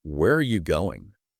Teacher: falling intonation can also be used on questions, but it makes you sound more demanding.